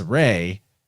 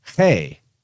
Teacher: there's a big aspirate push with the H sound. Now that H sound in more guttural accents can easily get hard, which brings us back to the craw sound of cross being potentially related to how some people say king.